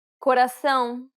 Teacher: It's the tilde accent, indicating that the vowel is meant to be pronounced with nasality.